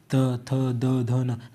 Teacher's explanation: आपकी जो जीव है ना ऊपर वाले दांतो को स्पर्श कर रही होगी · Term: दंत व्यंजन